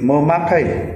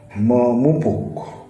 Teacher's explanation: Apabila prefiks me diikuti oleh kata yang berfonem awal p, maka me itu tetap dan p luluh, sehingga dia menjadi memakai, bukan mempakai, walaupun ada kata mempunyai.